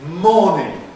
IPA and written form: ˈmɔːnɪŋ (morning)